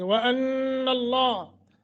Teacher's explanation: नून मुशद्दत है गुन्ना करेंगे लफ्ज़ अल्लाह मोटा समीउम नून तनवीन के बाद बा है तो